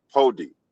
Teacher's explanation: the l sound when it's followed by an i in Bantu languages, the l becomes d